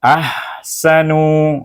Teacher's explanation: Hamzah dengan ha, ada bunyi hamas, angin ada keluar. Dan ha itu betul ha pedas.